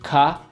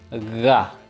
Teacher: both letters are done in the same location, Ka, Ga, but the letter G has a little bit more of a voice, Ka, Ga. So now practice adding some voice to that sound.